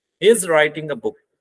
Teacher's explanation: So now here on book we will use falling tone.